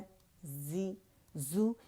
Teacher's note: buzzing sound جیسے ہوتی ہے نا شہد کی مکھی والی ساؤنڈ ہوگی